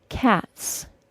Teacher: If a word ends in an unvoiced sound, like the T sound in the word cat, for example, the final S is pronounced as an S sound